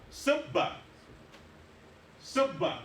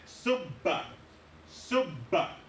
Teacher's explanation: We pronounce the ba twice. The first one without a vowel, the second one with a vowel. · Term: shadda